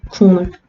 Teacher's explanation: 이번에는 기역과 미음이 만났어요. 기역과 미음 만났으니까 기역은 뭐로 변한다? 이응으로 변한다. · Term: 비음화